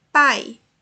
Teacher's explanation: O tom mais forte é o A. O I é o semitom, é a semivogal. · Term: ditongo